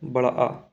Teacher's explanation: विवत कौन सा है बड़ा आ अर्ध विवृत हाफ ओपन आधा खुला हुआ